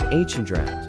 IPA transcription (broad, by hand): ˈhændˌraɪtɪŋ